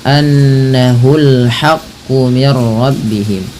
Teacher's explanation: Lagi-lagi ada gunnah pada lafal nun berharokat tasydid, tahan bunyinya. Bedakan nanti antara hu dengan ha di sini ya.